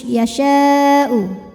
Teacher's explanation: syin dipanjangkan boleh empat boleh lima harakat tidak boleh dua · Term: mad wajib muttasil